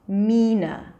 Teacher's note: So you can insist on that by just prolonging the primary stress, Jasmina, and then reduce the last part into a schwa, Mina. The first syllable can either be Yasmina, y sound as in yes, or a j sound, Jasmina, right?